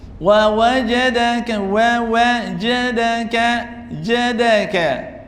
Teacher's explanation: jiimka markaan ku dhawaaqayno jiimka waa xaraf shadiid ah hamsina ma lahan waa majhuur